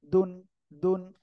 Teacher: জিহ্বার আগা এই দুই দাঁতের গোড়ায় ডাইরেক্ট লাগবে লেগে উচ্চারণ করতে হবে